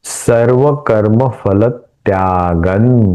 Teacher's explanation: यह अनुस्वार का उच्चारण न के जैसे किया क्योंकि आगे त है त थ द ध न त वर्ग का अनुनासिक न है इसलिए इस अनुस्वार का उच्चारण न के जैसा होगा।